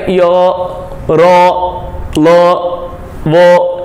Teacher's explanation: इनको अंतस्थ इसलिए बोला गया है क्योंकि न तो ये जीवा के पिछले हिस्से से बोले जाते हैं और न ही अगले हिस्से से, बल्कि इनका उच्चारण स्थान बीच में है। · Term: अंतस्थ व्यंजन